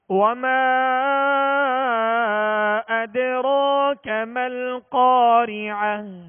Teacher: تو حرف مد سے یہ حمزہ دوسرے کلمے میں ہے، جدا ہے، لہذا یہاں مد منفصل ہوگا. اور دال پر سکون ہے، جزم ہے، لہذا دال پر قلقلہ کریں گے.